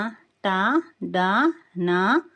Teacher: వీటిని పలికేటప్పుడు నాలుక తాలువును అంటే అంగెలి పై భాగాన్ని తాకుతుంది. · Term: మూర్ధన్య అక్షరాలు